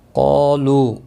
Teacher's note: قاف اور الف دونوں پر پڑے جائیں گے، قاف مستعلیہ ہے اس لیے پر پڑا جائے گا، ایک ہی کلمے میں اس کے ساتھ الف بھی آیا ہے اس لیے پر پڑا جائے گا، الف بھی۔